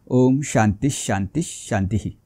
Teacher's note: आला श चा उच्चार अर्धा करायचा आहे आणि शेवटच्या विसर्गाचा उच्चार हा त्या स्वराप्रमाणे करायचा आहे